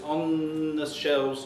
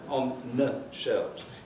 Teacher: What you really have here are not two consonants. What you really have here is a lengthened consonant.